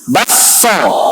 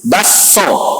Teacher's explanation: Memasukkan kaf ke dalam sin dan ditasydid sinnya. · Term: idgham